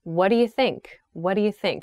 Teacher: we connect the words do and you quite closely in this expression